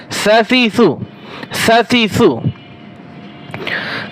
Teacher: সা নরম করে। সা জিহ্বার আগা উপরে দুই দাঁতের আগার সাথে লাগিয়ে পড়বেন।